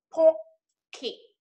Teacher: Pờ mím môi, cờ thì ra hơi và tờ thì cũng ra hơi đúng không?